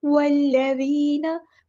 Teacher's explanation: वाव को हमने लाम के साथ मिला देना, हमज़तुल वस्ल हमारा ड्रॉप हो जाएगा